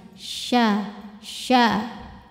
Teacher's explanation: Mai, mai, mai yasha. Shin, nyebarin angin, tengah lidah kita menyentuh langit-langit di atasnya.